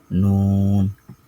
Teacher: জিহ্বার আগা তার বরাবর উপরের তালের সঙ্গে লাগাইয়া